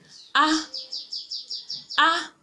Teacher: These vowels are pronounced without any nasal quality. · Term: oral vowel